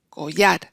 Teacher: en collar, donde está el acento, es en la A, collar. La O es átona, por eso ahí no tenemos el diptongo.